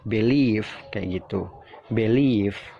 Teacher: Jadi penekanannya itu mengarah ke leave-nya ditekan ya. Jadi B-nya itu singkat aja.